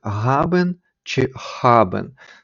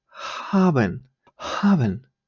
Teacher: вимовляється як глухий звук щось подібне середнє між х і г